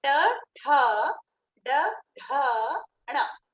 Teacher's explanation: you need to aspirate in the second and the fourth.